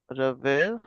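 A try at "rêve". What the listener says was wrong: देखो ये रेवे कैसे हो जाएगा, इसमें ई के ऊपर एक्सेंट तो नहीं लगा हुआ ना कहीं भी। रेव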